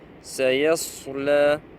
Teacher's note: c'est sin, elle est muraqqaqa, elle est de basse tonalité.